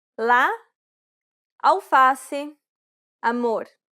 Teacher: This vowel sound is very similar to the A in father. This vowel sound is considered an open A sound because the jaw is low and the mouth is wide and open.